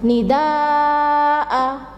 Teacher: Jadi membacanya itu harus panjang 5 harokat atau 2,5 alif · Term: mat wajib mutasil